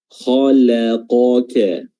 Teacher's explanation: Kha tebal, kha la tipis, qa tebal, ka tipis.